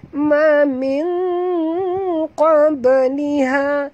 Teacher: nun mati bertemu qaf, sorokkan dan dengung